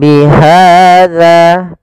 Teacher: pada lafal ha ada fathah bertemu alif yaitu mad tabi'i, panjangnya 2 harokat